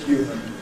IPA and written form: ˈhjuːmən (human)